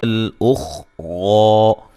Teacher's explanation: خا کو موٹا ادا کریں گے لیکن ہلانا نہیں ہے